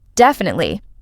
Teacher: when someone's certain, their voice stays flat and low.